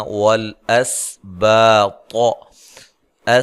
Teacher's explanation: سین کو باریک سیٹی سے ہلانا نہیں ہے، باریک سیٹی سے ادا کرنا ہے · طا کو موٹا ادا کرنا ہے، لمبا نہیں کرنا ملانے کی صورت میں